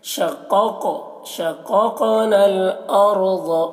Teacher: ثُمَّ شَقَقْنَا دونوں قاف کو موٹا کر کے پڑھنا ہے اور یہ جزم والے قاف میں قلقلہ بھی کرنا ہے شققنا الارض را کو موٹا کر کے اور ضاد کو بھی